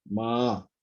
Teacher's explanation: First of all, low and then high.